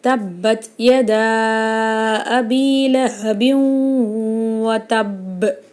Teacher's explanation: இந்த ஆயத்தில் பா மேலே ஷத்து வந்திருக்கு, அதனால் பாவை அழுத்தி ஓதணும். · தன்வீனுக்கு அப்புறமா வாவ் வந்திருக்கு. இது நம்ம குன்னா செஞ்சு ஓதணும். வாவ் மேலே ஷத்து வந்திருக்கு, அப்போ குன்னா செஞ்சு அழுத்தி நம்ம ஓதணும்.